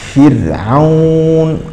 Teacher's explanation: الملاحظة الثانية هي أنك فخمت هذه الراء، اذهب إلى فرعون. فرعون هذه الراء لا تقرأ فرعون، تقرأ مرققة فرعون، قبلها مكسور وهي ساكنة